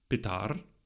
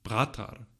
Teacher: in the Sanskrit word for father, the stress was on the second syllable, but in the word for brother, it was on the first syllable